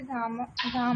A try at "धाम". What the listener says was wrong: धाम धाम न धाम রূপ বললাম ধাম ধামনি ধামানি ধাম ধামনি ধামানি কোন বিসর্গ নেই